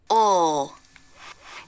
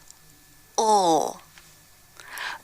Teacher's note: To make this sound, you don't lift your tongue tip. Instead, it's down, touching the back of the bottom front teeth. The back part of the tongue pulls back towards the throat. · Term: dark L